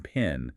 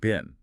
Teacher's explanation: if a beginner doesn't aspirate the P in pen to a native speaker, it could easily sound like they're saying bin